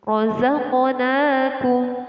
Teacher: Qalqalah artinya memantul. Jadi qaf ini adalah termasuk huruf qalqalah dan harus dibaca dengan memantul.